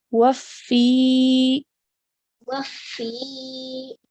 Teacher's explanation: So this is a ya madya because the letter before carries a kasra. So we're stretching the sound for 2 counts.